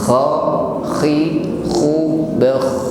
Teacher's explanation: huruf kha sukun tetap ada suara ngorok, ya, namun tetap lembut, tidak perlu ditekan.